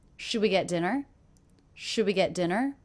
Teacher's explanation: go up and pitch at the end dinner dinner that's because this is a yes/no question pitch goes up · do you notice in this question my voice does go up and pitch at the end